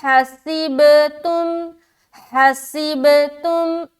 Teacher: تجوید یہ کہتا ہے کہ با میں قلقلہ کرو، با میں قلقلہ کرو، یعنی کہ لوٹتی ہوئی آواز معلوم ہونی چاہیے